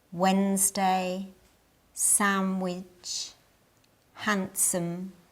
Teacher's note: In these, the D is silent.